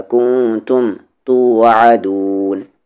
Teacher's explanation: نون ساکن کے بعد تا ہے اخفا ہوگا